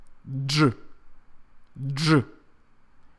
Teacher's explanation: Russians perceive the sound as two sounds, the sound D and the sound J. And they pronounce it like this, J, J.